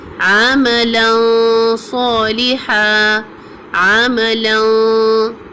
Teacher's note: Making the ghunnah of noon sound heavy. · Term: Heavy sound of ghunnah